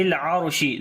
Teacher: ذی قوت عند ذی العرشی، ذال کو نرم پڑھیں گے، لام کے اوپر صفت توسط ہوگی، را کو موٹا پڑھیں گے، اس کے اوپر جزم ہے اور اس سے پہلے زبر ہے اس وجہ سے.